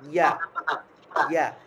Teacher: ইয়ার মাখরাজটা হচ্ছে জিহ্বার মধ্যখান, মনে রাখবেন 6 নাম্বার মাখরাজ জিহ্বার মধ্যখান